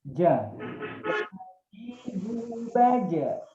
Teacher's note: kolkolahnya lebih condong bunyi fathah